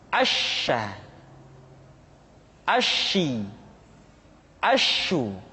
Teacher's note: sifat at-tafashi, yaitu menyebarnya angin di dalam mulut kita. Asya, asyi, asyu.